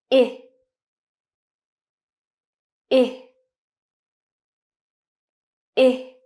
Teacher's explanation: Now your tongue is a little higher than for the e sound, and you should stretch out your lips a little, and it's a short sound. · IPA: /ɪ/